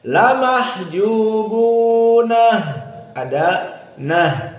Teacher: Dan di sini tidak ada perbedaan lagi dengan jumhur kecuali kalimat la mahjubun bagi qiraah Ya'qub. Maka di qiraah Ya'qub di sana dibaca dalam keadaan ha as-saktah.